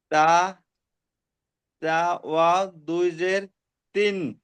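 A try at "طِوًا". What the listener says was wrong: তিউ। তিউ। তা ওয়াও দুজের তিন হয় না, তা ওয়াও দুজের, আমার মুখের দিকে তাকান, তা ওয়াও দুজের তিউ, এইভাবে পড়তে হবে।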